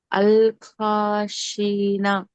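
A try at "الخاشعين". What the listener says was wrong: కాశీ తర్వాత దీర్ఘం ఉందా లేదా? మీరు ఆపుతున్నట్లయితే సుకూన్ చేసి ఆపాలి. నాకు సుకూన్ చేయాలి. నూన్ ఫతాకు సుకూన్ చేయండి. నూన్ ఫతాని సుకూన్ చేసి ఆపండి. అల్ ఖాషీన్ ఆపుతున్నట్లయితే. అలిఫ్ సగీరా కూడా ఉంది.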